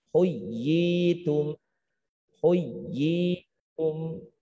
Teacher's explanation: Di situ ada huruf madnya. Panjangkan selama 2 harokat.